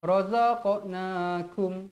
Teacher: Qaf qalqalah sughra, wajib dibaca melantun.